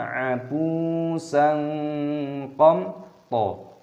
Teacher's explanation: yang bertemu dengan huruf qaf, dibaca sebagai ikhfa sehingga menjadi kabur